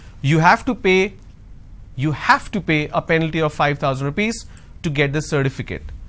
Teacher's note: Now here I'm going to stress on have. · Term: sentence stress